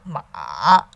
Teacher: starts low dips to the bottom that rises towards the top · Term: third tone